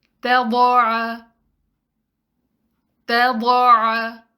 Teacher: ضاد کی مثالیں، اس ورڈ میں تا کو لائٹ رکھنا ہے، ضاد کو ہیوی کرنا ہے، عین کو لائٹ اور مخرج سے نکالنا ہے۔ اس ورڈ میں کہیں بھی حروف مد نہیں آ رہے تو تینوں لیٹرز کو سنگل کاؤنٹ پڑھیں گے۔